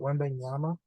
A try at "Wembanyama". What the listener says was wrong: No, you're saying the N instead of an M at the end.